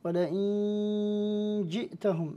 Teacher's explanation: النون قبل الجيم حكم الإخفاء مع الغنة